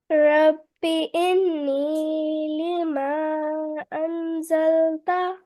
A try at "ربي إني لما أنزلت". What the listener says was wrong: Yes, just for this gunna, noon tashdid, stay a little bit more here.